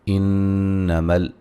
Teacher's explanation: انما نون مشدد پہ غنہ ضروری ہے